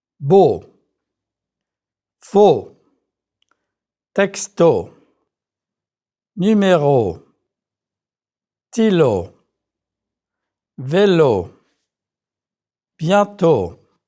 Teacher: Shorten the word to go, checking that your lips protrude. O is a very clean sound in French. Make sure that you don't let that W sneak in. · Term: French closed O sound